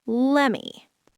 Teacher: Let me see it becomes let me see it. The T disappears entirely and the M stretches out.